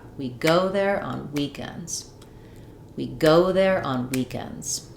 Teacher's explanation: Notice on weekends, just the week is the stressed part. So, it has two syllables and words typically have one stressed syllable.